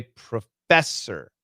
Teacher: the first one is a schwa, the second one is a schwa r